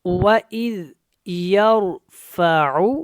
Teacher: یور کا جو را ہے یہ موٹا ہے، اس کو آپ نے موٹا پڑھنا ہے کیونکہ را ساکن ہے، اس سے پہلے زبر ہے